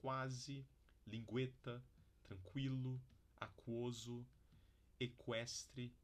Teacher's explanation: Bom, temos também ditongos crescentes, que a gente inverte a ordem aqui. Começa com glide e vai para vogal, tá? E é muito típico na sequência qua e gua do português.